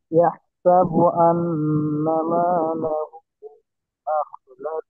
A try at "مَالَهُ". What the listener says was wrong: মালাহু, ওটা তিন হলে আরেকটু বেশি টান দেন।